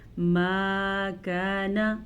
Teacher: کاف زبر الف کا، یہ بھی الف مدہ ہے۔ الف مدہ کا مطلب یہ ہے کہ ہم اس الف کو کھینچ کے پڑھیں گے۔ جب بھی الف سے پہلے زبر ہو تو اسے الف مدہ کہتے ہیں۔